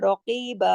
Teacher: रकीबा में रॉ मोटा पड़ा जाएगा, अलैकुम में पीछे जो अलैकुम है याई लीन है, रॉ मोटा पड़ा जाएगा, कफ कॉफ मोटा पड़ा जाएगा, रकीबा।